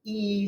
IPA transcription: iː